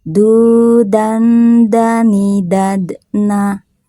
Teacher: sukunnya sukun asli maka dipantulkannya sedikit aja